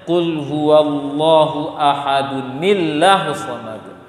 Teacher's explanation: Maka dibaca kasroh pada nun sukun asli dan hilang hamzah wasolnya kalau nyambung ya.